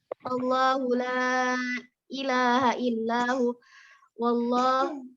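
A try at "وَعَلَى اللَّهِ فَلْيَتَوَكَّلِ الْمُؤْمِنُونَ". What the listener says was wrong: Bukan wallah tapi wa 'alallahi.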